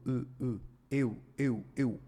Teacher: então o do vai ter com o som reduzido o eu o eu é composto de uma vogal e com o som de uma semivogal u eu eu eu ou seja o u é mais fraco que